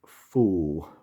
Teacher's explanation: there's the monophthongs, so in some ways similar to areas of Northern English and Scotland in having a long vowel rather than a diphthong